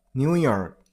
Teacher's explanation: Stress on the last syllable.